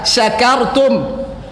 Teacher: Sya dari tengah lidah